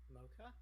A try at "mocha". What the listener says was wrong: It's not an A vowel though. It's an O. It's mocha, not